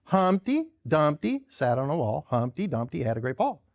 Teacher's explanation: trochaic tetrameter, often catalectic, missing the final unstressed syllable. A trochee, stressed, unstressed.